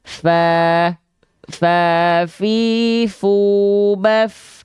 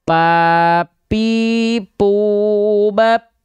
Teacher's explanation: Jadi ujung gigi seri atas kita sentuhkan dengan bibir bawah bagian dalam yang basahnya. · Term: huruf fa